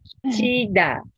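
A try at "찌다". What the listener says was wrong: ち ょ っ と さ っ き チ ー ダ に 聞 こ え た ん で す け れ ど も 、 も っ と 、 こ こ ち ょ っ と 当 て て み ま す 。 当 て て ト ー ン を 上 げ て 。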